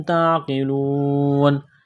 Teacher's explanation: اس قاف کو موٹا کرنا ہے، بڑا قاف ہے نقطوں والا، واو ساکن سے پہلے پیش ہے، حروف مدہ واو ہے، الف کے برابر کھینچنا ہے، یہاں پر وقف کریں گے تو نون کو ساکن کریں گے۔